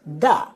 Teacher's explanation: if a word starts or ends with a th sound, we're going to turn that into a dental duh or tuh. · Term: hard TH sound